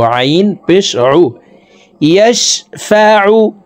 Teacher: আইনকে হালকের মধ্যখান থেকে চাপ দিয়ে উচ্চারণ করব।